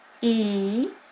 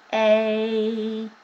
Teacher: They're the same pitch, but yet the A sounds lower. That's because the after vibration of the A sound fell closer to me in the lower harmonic levels, in the lower pitches.